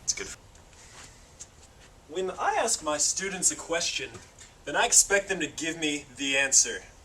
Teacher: in the connected speech it sounded like there is a y between them the answer this is because when we connect final vowels to